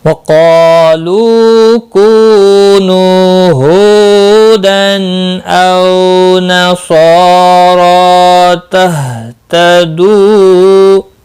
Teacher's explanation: او واو لین ہے، نصارا صاد مستعلیہ ہے، پر پڑھا جائے گا، را کے اوپر کھڑی زبر ہے، ایک الف کے برابر کھینچ کر پڑھیں گے اور را پور بھی پڑھا جائے گا کھڑی زبر کی وجہ سے، اور صاد کے اوپر بھی کھڑی زبر ہے، اس کو بھی ایک الف کے برابر کھینچ کر پڑھیں گے۔